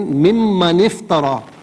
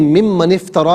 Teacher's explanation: یہ مان افترا نہیں ہے، میم پر فقط زبر ہے، الف مدہ نہیں ہے. اسے بغیر کھینچے پڑھیں گے.